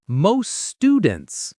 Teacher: The T in most is very light, sometimes dropped.